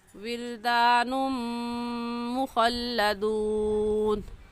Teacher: اس تنوین پر ہم غنّے کے ساتھ ساتھ ادغام بھی کریں گے، کیونکہ تنوین کے بعد حروف یرملون جو کہ 5 ہیں، یا غا میم لام واو نون۔